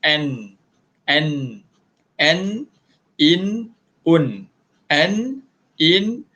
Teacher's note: Nun tu kita sebut tepat pada makhraj, iaitu hujung lidah kita kena dekat langit-langit. Hujung lidah kita ni kena dekat langit-langit.